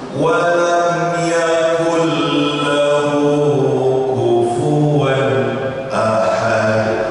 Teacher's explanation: karena nun sukun ketemu dengan lam, ya, itu hukum bacaannya idgham bila hunna, langsung masuk lam. Jadi jangan terdengar walam yakul, masih terbunyi nunnya, nggak boleh, tapi langsung masuk lam. · jangan ada terdengar bunyi nun pada walam yakul lahu, karena nun sukun ketemu dengan lam, ya, itu hukum bacaannya idgham bila hunna, langsung masuk lam.